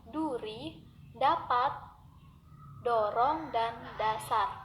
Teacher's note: Lafal konsonan D. Konsonan D dilafalkan dengan cara mula-mula menempatkan ujung lidah pada gigi atas, lalu udara diletupkan dengan tiba-tiba sehingga ujung lidah terlepas dari gigi atas itu.